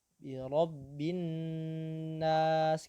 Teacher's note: Jadi kalau nun bertasydid dia adalah tingkat gunnah yang paling sempurna.